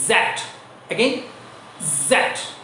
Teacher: জিহ্বার আগেকে দাঁতের গোড়ায় ধাক্কা দিয়ে জ্যাট।